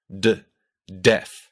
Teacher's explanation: tongue hits your alvear ridge. That ridge right behind your front upper teeth. D. But in Russian, the tip of your tongue flattens out a bit so that the tip of your tongue actually touches your upper teeth and the blade of your tongue, that part right behind the tip, touches your alvea ridge.